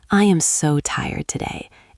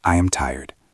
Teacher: Use rising intonation. Instead of a flat I am tired, try a melodic I am so tired today. It sounds friendlier.